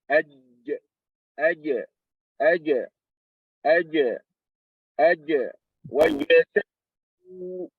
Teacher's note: Recap. Jim, aj, touching the middle of the tongue, touching the hard palate